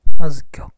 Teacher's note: z emphatique, c'est-à-dire qu'il se prononce d'un ton grave.